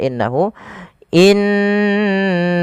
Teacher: innaha tahankan dulu dua dua ketukan baru dilepas